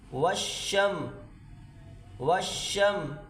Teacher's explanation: شین پہ زور لگا کر اس کو ادا کریں، شین کو اور میم سے ملائیں۔